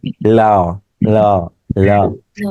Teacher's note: জিহ্বার ডগার সামনে আসে, দুই পাশ দিয়ে বাতাস বের হয়, তাকে বলে পার্শ্বিক ধ্বনি